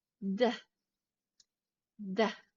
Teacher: in American English, the T tends to turn into a D, and you make this sound by shifting the tip of your tongue to the roof of your mouth. D, D.